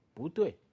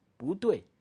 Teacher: if 不 is coming before another fourth tone, you read it in this case 不 second tone.